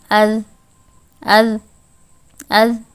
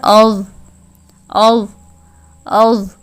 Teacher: ایک دم سے جو ہے یہ آواز رک رہی ہے، کنٹینیو نہیں ہے، نہ اس میں سے ایئر فلو جو ہے وہ پاس ہو رہا ہے۔ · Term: حروف مجہورہ